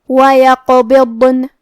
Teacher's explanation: یہاں حرف الضاد ہے اور ضاد کی ادائیگی زبان کے کروٹ اور اوپر کے داڑھوں کی جڑ سے ہے. ضاد حروف تفخیم میں سے ہے، لہذا ہمیں یہ حرف کو بھاری آواز میں پڑھنا ہے اور کیونکہ اس پہ جزم ہے لہذا ہم حرف الضاد کو ظاہر کریں گے. · کلمت یقبضن میں کیونکہ قاف پہ جزم ہے لہذا ہمیں قاف کو قلقلہ سے پڑھنا ہے اور قلقلہ کا معنی ہے حرف ساکن کو ہلانا، لہذا ہمیں قاف کو ہلاتے ہوئے یہ کلمہ کو پڑھنا ہے